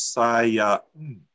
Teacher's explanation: In Japanese, if they were to count that, it would be counted as sa-ya-n. The N sound at the end of the word is counted as a separate syllable. So what they're counting is not like our syllables.